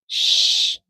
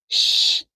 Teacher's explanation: So, the sh consonant speech sound is described as a voiceless post alveolar fricative. Voiceless because again, there's no vibration from the Adam's apple when pronounced. Post alveolar because the tip of the tongue is elevated in such a way that the place it makes contact with when elevated is or are the sides of your palate and your teeth when pronouncing this sound. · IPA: /ʃ/